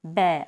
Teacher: दोनों लिप्स आपस में होंठ मिलते हैं तो बै का उच्चारण होता है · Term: ओष्ठ ध्वनि, ओष ध्वनि